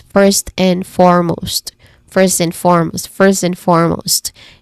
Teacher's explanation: the words first as well as and are kind of like linked, kind of like blended almost, kind of like very quickly. There's no distance between them.